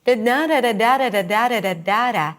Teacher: In Brazilian Portuguese, the pitch shifts from high to low quite often. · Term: melody